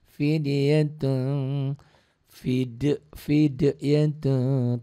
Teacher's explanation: tun jadi tung karena tanwin ketemu to ikhfa tuh. Fidyatun tungnya jangan eng banget ya karena memang ikhfa itu ada absa, ada abad, ada ausat, ada akrob.